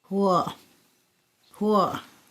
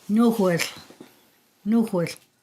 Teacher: It's a voiceless velar fricative and it has labialization on it. So remember that that little raised W means that you're rounding your lips.